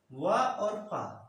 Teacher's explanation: वा और फा, दंत तथा ओष्ठ से मिलकर उच्चारित होता है। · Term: दंतोष्ठ